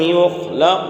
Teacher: یخلق قاف ساکن ہے اور قاف یہ حروف قلقلہ میں سے ہے، اس لیے یہاں پر قلقلہ ہوگا